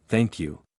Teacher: The th sound in thank is soft, put your tongue between your teeth slightly, and you sounds like you.